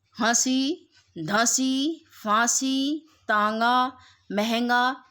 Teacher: अनुनासिक स्वर जहां भी आपको चांद बिंदी शब्द के ऊपर लगी मिल जाए उस बिंदु को हम अनुनासिक या फिर चांद बिंदु कहते हैं। इसकी आवाज बोलते समय वायु मुख और नाक दोनों से निकलती है। जैसे हंसी, धंसी, फांसी, तांगा, महंगा आदि।